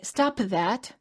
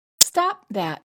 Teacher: when you say stop that the final P must be held because the word that begins with a consonant therefore don't say